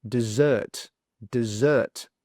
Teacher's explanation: On the second one, it swaps. So the stress is on the second sound